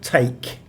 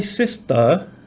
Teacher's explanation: you can feel that puff of air because the T is aspirated